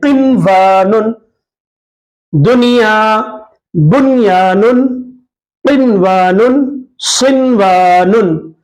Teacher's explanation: نون کی آواز کو ظاہر کریں گے، غنہ نہیں کریں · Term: اظہار